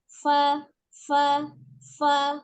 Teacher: Ujung gigi seri bagian atas yang bertemu dengan bibir perut bibir bagian bawah ya. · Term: huruf fa